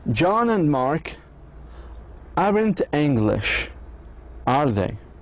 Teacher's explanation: Our voices goes down in the tag if we already know the answer and just are making small talk.